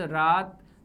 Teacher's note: रात में र का उच्चारण करने पर र मुख के दोनों तरफ के मसूढ़ा जो है वहां से स्पर्श हो रहा है। ये भी ल वर्तस्य है, दंत प्लस मसूढ़ा।